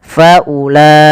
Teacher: Maka wajib kita panjangkan dulu la-nya 4 atau 5 harakat. Faulaika. Tidak boleh kurang. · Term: mad wajib muttasil